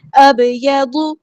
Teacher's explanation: با ساکن یہاں پہ قلقلہ ہو رہا ہے